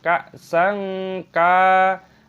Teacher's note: Fiha, Kak sang, ada hamzah sukun dibaca kak sang, fathah tanwin bertemu dengan kaf dibaca ikhfa disamarkan